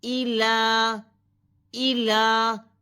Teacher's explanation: الہ الناس، اچھا اب حمزہ کی زیر کو کھینچا نہیں جائے گا، حمزہ زیر ای، حمزہ زیر ای، حمزہ زیر ای، اب الہن نہیں کرنا، ٹھیک ہے، الہن، ادھر لام کے اوپر کھڑی زبر ہے جس کو ایک الف کے برابر کھینچا جائے گا، حمزہ زیر ای، لام کھڑی زبر لا، الہ، الہ، ہا زیر نون ہن، پھر نون مشدد ہے، نون مشدد پر غنہ کیا جائے گا، ہا زیر نون ہن، نون زبر الف نا، الہن نا، سین ساکن، الہن ناس۔